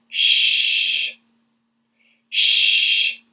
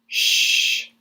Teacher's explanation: There's no vibration, right? And that's because the sound is coming from your mouth muscles, not your vocal cords. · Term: voiceless consonants